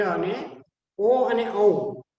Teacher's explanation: ઓ અને ઔ એ કંઠમાંથી અને ઓષ્ઠમાંથી બંનેમાંથી એ બોલી શકાય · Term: કંઠ્ય અને ઓષ્ઠ્ય